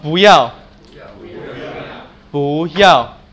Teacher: Raise and then fall